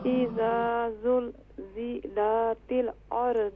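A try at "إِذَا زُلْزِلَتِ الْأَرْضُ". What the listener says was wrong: اذا زلزلت نہیں، اذا زلزلت زیادہ نہ توڑا کریں، دیکھیں جب توڑتی ہیں نا تو پھر محسوس ہوتا ہے آپ ساری جگہ پر قلقلہ کر رہی ہیں۔ اذا زلزلت نہیں، اذا زلزلت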